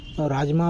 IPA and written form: raːdʒmaː (Rajma)